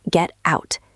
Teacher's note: Out starts with O. We link them, so the T is now between E and O, two vowels, so the T becomes soft. · This is a form of linking. If one word ends in a T and the next starts with a vowel, that T becomes a flap T.